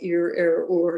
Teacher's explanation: The true pharyngalization gives it a quality very much like North American post-vocalic R. So, you know, pronounce something like ear, or, and you're pretty close to pharyngalization in true pharyngalization in Dagestan.